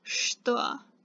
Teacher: So it's written что, but it's pronounced что. So there's an sh sound instead of the ch sound.